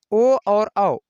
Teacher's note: ए ए, ए ए, ए ए जब बोलेंगे तो इसमें देखिए जीभ भी ऊपर सट रही है और भीतरी तंत्रिका से आवाज भी आ रही है, तो इसमें कंठ और तालु दोनों का प्रयोग हुआ है। ओ, ओ और औ, ओ और औ में ओठ का प्रयोग और कंठ का प्रयोग, इन दोनों का प्रयोग हुआ है, तो इनका उच्चारण स्थान कंठ ओष्ठ यानी कंठोष्ठ है, ठीक।